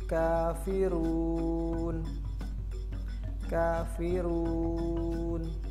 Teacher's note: mad arid li sukun itu kita baca panjangnya sebanyak 2 harokat